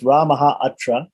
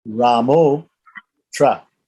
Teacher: the short A visarga turns into an O, and the short A in the beginning of the next word turns into the avagraha, or the apostrophe.